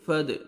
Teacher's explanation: फद दाल हुरूफ क़लक़ला में से है, डबल साउंड आएगा।